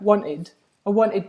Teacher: a British version of that might sound a bit like wanted I wanted yeah with a glottal stop